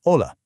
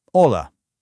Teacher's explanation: It's literally never pronounced. So we aren't breathing out an H sound, we just say a simple, bright, and easy hola